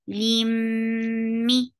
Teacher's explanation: Attached with mim. Mim will get sifa of gunna, and that will be akmal gunna because this is idgham with gunna. Limmi, for kasra give e sound.